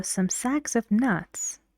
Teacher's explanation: the first word and the next word after of are stressed